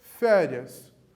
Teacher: a penúltima sílaba de cada palavra aqui é a tônica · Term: paroxítonas